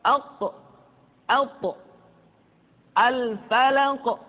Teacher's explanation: Kemudian huruf qaf dan to karena dia memiliki sifat al-qalqalah ketika dalam keadaan sukun. Maka qalqalah yang terdengar ketika mengucapkan qaf dan to terdengar menebal suaranya.